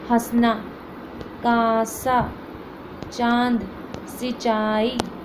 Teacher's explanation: नाक से भी निकलती है मुझसे भी निकलती है ठीक है हवा जो है वह मुंह से निकलती हैं और नाक से निकलती है